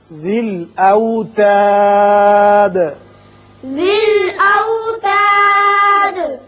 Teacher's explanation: یہاں جب ہم نے وقف کیا تو دال ساکن ہو گئی اور اس کی صفت قلقلہ ادا کی